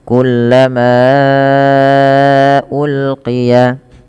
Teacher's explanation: Kullama awalnya dua harakat karena adanya hamzah bertemu setelahnya hamzah setelah huruf mad maka dia panjangnya empat atau lima harakat. Maka dipanjangkan dulu. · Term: mad jaiz munfasil